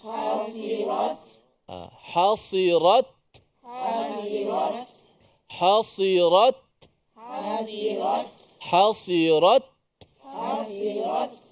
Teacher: hasirat ta itu hasirat okey matikan suara dulu putuskan suara dulu Ta pada makhraj barulah lepas lidah kita tu bunyi angin sikit hasirat Cuba sebut hasirat hasirat hasirat hasirat hasirat hasirat hasirat ha · suara putus dulu suara mati dulu dipanggil sifat syiddah suara kita tertahan tu